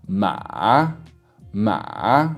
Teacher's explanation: like a fully down, and then like a croaky bit in the middle, and then going back up to around sort of mid-tone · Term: full third tone